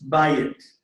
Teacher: Okay, the accent's on the front. It's bayit.